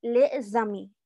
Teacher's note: Y luego viene a mí, que empieza con una vocal. Entonces, la liaison consiste precisamente en pasar el sonido de esa S a la siguiente palabra